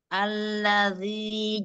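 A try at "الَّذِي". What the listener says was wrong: Lamnya ketebalan. Senyumkan yuk.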